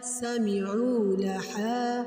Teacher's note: عین ہے تو حلق کے درمیان سے آواز نکلے گی